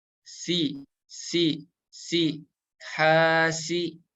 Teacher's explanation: Untuk makhrajnya dari ujung lidah kita nempel ke ujung gigi seri yang bawah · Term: Huruf sin